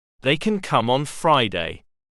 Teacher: When we use the positive form of kin, we quickly glide over the can, and it is hardly pronounced.